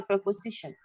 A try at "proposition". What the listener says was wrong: Don't say prepositional. Proposition.